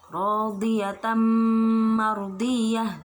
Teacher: Idgham bi gunnah berarti dengung